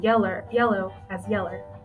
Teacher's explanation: the final o is also replaced with the right hook schwa